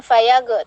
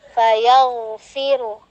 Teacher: Di situ ada huruf ghain ya, jangan sampai tawallud, jangan fayag tapi fayaghu. Dia selain isti'ala dia juga rokhawah. Jadi dia dialirkan ya.